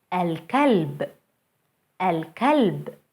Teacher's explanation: Moon letters allow the L before them to be pronounced fully as L.